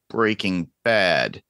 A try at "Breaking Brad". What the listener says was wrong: Brad. said bad. You said bad. You said bad. Breaking Brad.